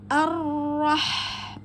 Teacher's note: ha sukun Tengah tenggorokan maka alirkan sifatul ha pada hamasnya